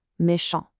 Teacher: Notice the sound here, méchant. It stops cleanly right at the nasal on sound, and the final t is completely silent. Because Paul is male, there's no e at the end to wake up that t.